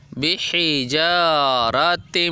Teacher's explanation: یہاں پہ تا کو میم سے ملائیں گے اور ہونٹوں کو جوڑ کے ناک سے غنہ کی آواز نکالیں گے، بحجارۃ، اور آگے من سجیل، یہ جو آگے ہم آواز نکال رہے ہیں یہ بھی ناک سے ہی نکلتی ہے، لیکن اس کو اخفا کی آواز کہتے ہیں۔